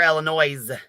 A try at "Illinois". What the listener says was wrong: It's Illinois. Absolutely, there is no S in that word.